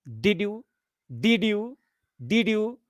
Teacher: So, first fall, then rise.